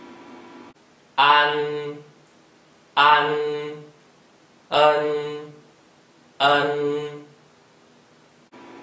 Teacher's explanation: Each of these symbols has a little nasal sound at the end, made by touching your tongue to the roof of your mouth directly behind your front teeth. The nasal sound is formed in the front part of your nose.